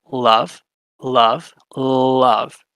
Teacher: you're having the air flow around the sides of your tongue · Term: lateral